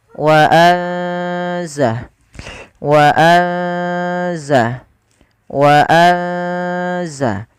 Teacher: ikhfa itu membaca di antara keduanya yaitu dia menyamarkan saja. Menyamarkan suaranya kepada huruf zai. Wa anza. Wa anza wa anza kami ulangi wa anza sambil ditahan dua harakat wa anzalna.